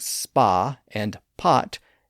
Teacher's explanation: words like spa and pot use the same vowel sound in American English but tend to have slightly different sounds in British English. So all of that explains why those words are spelled with different letters even though the sounds are essentially the same in American English.